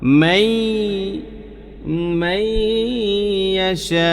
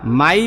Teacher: কীরকম আমি উদাহরণ দেই, যেমন মাই মাইয়াশা, দেখেন মান ইয়াশা ইয়াশা উ, শব্দটা কিন্তু মান ইয়াশা উ, শব্দটা হলো মান ইয়াশা উ, কিন্তু আমরা মান না বইলা মাই বলতেছি এজন্য কারণ এখানে ঈদগাম হইছে